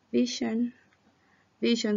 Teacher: y la v dentro labial labio inferior diente superior visión visión jamás se juntan los labios en la v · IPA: [vi:]